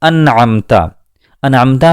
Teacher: ان دونوں لفظوں میں آپ نے نون ساکن اور تنوین کی بالکل اصلی آواز کو سنا، جو نون کا مخرج ہے، زبان کی نوک، سامنے والے دانتوں کے مسوڑوں سے ملا کر ہم نون ادا کرتے ہیں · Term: اظہار